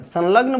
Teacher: ल वर्ण दंत से बोला जाता है